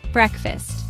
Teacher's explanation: Two-cllable word stress is on first syllable.